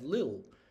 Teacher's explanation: often because the T in the middle gets elided and you just have lil